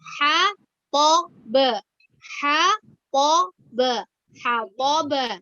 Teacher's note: Jangan karena setelah huruf H itu berupa huruf to, maka kita terpengaruh hatab ya. Tapi dibuka ya.